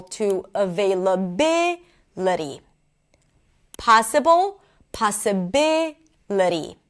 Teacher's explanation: So, for example, with the word available, here the primary stress is on the they, available, right? But once I add ity, it draws the stress, and the stress moves from available to availability.